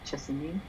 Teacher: there are suggestions of just the final vowel dropping off